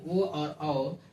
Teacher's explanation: ये 2 वर्ण ऐसे हैं, ओ और औ, जिसमें उच्चारण करते समय कंठ का और ओष्ठ दोनों का सहायता लिया जाता है। इस प्रकार ये दोनों वर्ण जो है कंठ ओष्ठ के कहलाता है। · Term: कंठोस्थ